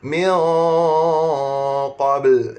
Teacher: Apabila qaf huruf yang tebal, maka dengung pun kena tebal juga. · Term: ikhfa haqiqi